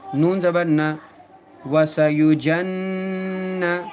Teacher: واو زبر وا، سین زبر سا، وسا یا پیش یو، وسا یو، جیم نون زبر جن، نون پر تشدید ہے لہٰذا نون کو دو بار پڑھیں گے، ایک بار پیچھے والے حرف جیم سے ملا کر اور ایک بار خود نون کو. نون پر جب تشدید آ جائے تو غنہ کیا جاتا ہے، ناک میں تھوڑی دیر آواز کو روکنا غنہ کہلاتا ہے